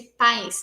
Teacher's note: Então, o pá e o is. Em pais, é só uma sílaba, e a vogal é o A. Mas ainda existe esse som que se parece muito com o I, que seria esse pais, né? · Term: aproximante palatal